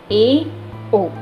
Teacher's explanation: Next है हमारा अर्ध संवृत स्वर। जब मुख द्वार अर्ध संकुचित होता है, यानी कि आधा संकुचित होता है, तब जो स्वर निकले उन्हें अर्ध संवृत स्वर कहते हैं।